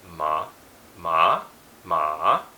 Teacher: one's a rising tone one's a falling tone one drops and rises one's high and then one's no tone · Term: tones